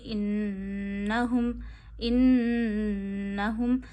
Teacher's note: एक उंगली जितनी ठहराइए। हा को गले के आखिर से अदा करिए। · नून पे तशदीद है तो नून की आवाज नाक में ले जाइए। एक उंगली जितनी ठहराइए।